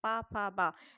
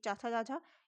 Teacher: दोनों ओठ आपस में ऊपर नीचे एक हो रहे हैं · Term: ओष्ठ ध्वनि